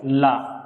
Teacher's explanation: क्या करती है, स्पर्श करती है। और जब प्राणवायु बाहर निकलती है तो जिह्वा के अगल बगल से टच करती हुई निकल जाती है। उस समय जिस वर्ण का उच्चारण होता है वही क्या होता है, पार्श्विक व्यंजन होता है।